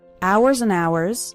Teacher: remember the H in the word hours is silent so don't pronounce it